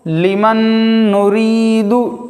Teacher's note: نون ساکن کے بعد حروف جر ملون میں سے نون آنے کی وجہ سے غنہ کے ساتھ پڑھیں گے